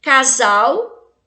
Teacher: Em todas essas palavras, o S tem o som de Z porque ele está entre vogais.